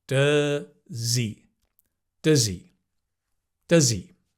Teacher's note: the H or the H of he usually disappears in more natural English, and it becomes does he. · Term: losing sounds